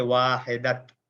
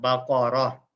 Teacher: اس پر وقف کرتے ہوئے اسے ہمیشہ جزم والی ہا میں بدل کر پڑھا جاتا ہے، یعنی گویا کہ گول تا جہاں پر جملے کے آخر میں ہو اور وہاں پر ہم وقف کر لیتے ہیں تو وہ تا ساؤنڈ نہیں رہتی، پھر ہا ساؤنڈ بن جاتی ہے · وقف کرتے ہوئے ہم واحدہ، ہا ساؤنڈ آخر میں لگائیں گے، تا نہیں لگائیں گے